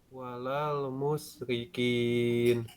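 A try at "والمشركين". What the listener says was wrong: Nah, shinnya ya walal mush.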